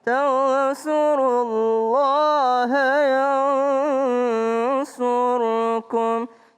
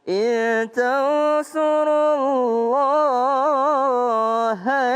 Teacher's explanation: kalau disambung Allahnya cuma dua harokat.